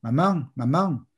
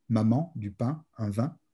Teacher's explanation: on décompose la voyelle en deux temps. Le premier temps n'est pas nasalisé, le deuxième l'est.